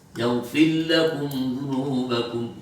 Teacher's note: Bacaan Imam Abu Amr itu sering menggunakan ra-nya itu berhadapan dengan lam itu diidghamkan karena saking sulitnya membedakan antara ra dengan lam.